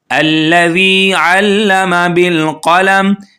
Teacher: اوپر والے دانتوں کا کنارہ اور زبان کا کنارہ جب یہ دونوں آپس میں ٹچ ہوں گے تو یہ نکلے گا ذال